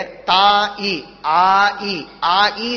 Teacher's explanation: ಆ ಇ ಸೇರಿದರೆ ತೇ ಅಂತನ್ನುವ ಶಬ್ದವಾಗತ್ತೆ. ತಾಯಿ ಸೇರಿದರೆ ತೇ ಅಂತ ಶಬ್ದ.